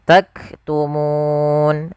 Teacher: di sini munya panjang dulu baru matikan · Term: Mad Arid lisukun, mad arid lis sukun